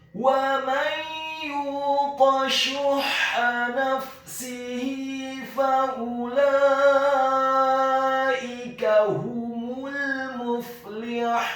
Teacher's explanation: Kata muflihun, huruf mim-nya dibaca dhammah 1 harokat, huruf fa-nya dibaca sukun, huruf lamnya dibaca tipis, tarqiq kasrah 1 harokat, huruf ha-nya dibaca tipis, tarqiq nyaring dan halus, dhammah 2 harokat karena setelahnya ada huruf wawu sukun, dan di akhir ayat huruf nunnya dibaca sukun.